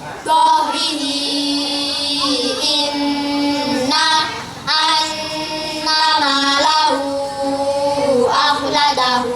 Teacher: mad silah tawilah, setiap hi dan hu bertemu hamzah, panjangnya 2,5 alif atau 5 harokat